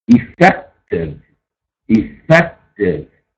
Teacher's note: Accent on the second syllable, we have an adjective.